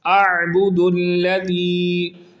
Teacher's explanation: اعبد الذی، پہلا ہمزہ ہے، دوسرا عین ہے، عین کو درست انداز میں حلق کے درمیان والے حصے سے نکال کر پڑھیں گے